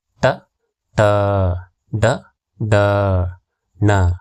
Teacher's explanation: ಐದು ತಾಲವ್ಯ ಅಕ್ಷರಗಳಿವೆ ಮೂರನೆದಾಗಿ ಟ ವರ್ಗ ಈ ಅಕ್ಷರಗಳು ಮೂರ್ಧನ್ಯ ಭಾಗದಲ್ಲಿ ಅಂದರೆ ನಾಲಿಗೆಯನ್ನು ಹಿಂದೆ ಚಾಚಿ ಬಾಯಿಯ ಮೇಲ್ಭಾಗದಲ್ಲಿ ಸ್ಪರ್ಶಿಸಿದಾಗ ಉಚ್ಚಾರಗೊಳ್ಳುವುದರಿಂದ ಇವುಗಳನ್ನು ಮೂರ್ಧನ್ಯಾಕ್ಷರಗಳು ಎನ್ನುವರು